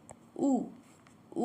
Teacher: संवृत है, पश्च है और वृत्तमुखी है